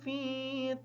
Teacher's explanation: فی کی جو یا ہے یہ یا ساکن ہے، یا کے پیچھے زیر ہے اس وجہ سے یا مدہ ہے۔ فا کو تھوڑا سا لمبا کر کے پڑھیں گے تاکہ یا صحیح طریقے سے ادا ہو جائے